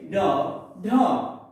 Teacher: जिनके उच्चारण में जीभ पहले ऊपर फिर झटके से नीचे आती है, वो उच्छिष्ट व्यंजन कहलाते हैं।